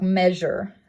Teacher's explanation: And that's going to make the j sound. It's an alveolar palatal, and it is voiced in words such as like measure, that j sound. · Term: fricatives